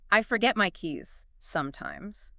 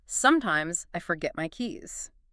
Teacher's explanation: there's more weight on sometimes. It's like you're pausing to think about it.